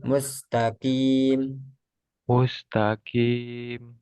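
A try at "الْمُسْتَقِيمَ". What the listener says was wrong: Nah, itu masih ada udara.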